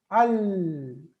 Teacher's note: in the Qamariya letters, the lam is pronounced. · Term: The lam ta'rif